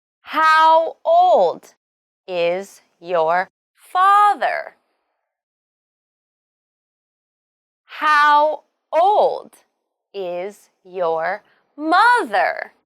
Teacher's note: note that in these questions the key words are how old and the noun father or mother and you should use a falling tone